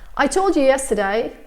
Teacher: you becomes like a schwa sound very often